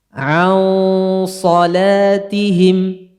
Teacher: Gunnah ikhfa'nya ditafkhimkan gara-gara setelahnya huruf tebal.